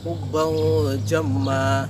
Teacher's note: Cara membacanya ialah dengan menyamarkan huruf N yang terdapat pada nun mati tanwin tadi itu diantara huruf N dan NG. Jadi tidak condong ke NG, tidak condong juga ke N, melainkan berada di tengah-tengahnya atau di antaranya.